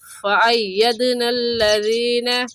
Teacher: دال حروف قلقلہ میں سے ہے، قلقلہ کریں گے